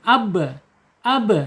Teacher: sifat yang tidak berlawanan yaitu qalqalah mantul ketika sukun